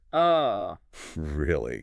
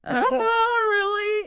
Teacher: Slow, with a rising intonation at the very end.